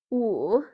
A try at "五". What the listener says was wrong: উ third tone third tone